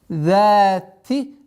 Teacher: За межзубная с удлинением в размере 2 огласовок.